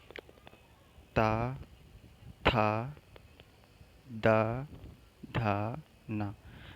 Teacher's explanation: हमारे दांत को स्पर्श कर रही, हवा भी और जीभ भी।